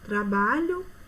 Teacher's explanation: paroxítona quanto a sílaba tônica é a penúltima